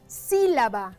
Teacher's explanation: Aquí la sílaba tónica es la sí. Dicho sea de paso, es una sílaba que tiene tilde, es decir, un acento ortográfico que se marca.